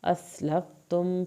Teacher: سین کو سیٹی کے آواز کے ساتھ پڑھیں گے